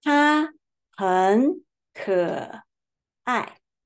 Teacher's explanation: 可 third tone and 很 third tone. We change the form of third tone to second